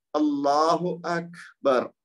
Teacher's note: کاف پہ تھوڑا سا رکیں گے، آواز اس کی جاری رہے گی تو پھر وہ ہمس کے ساتھ ادا ہوگا کیونکہ کاف ساکن ہے۔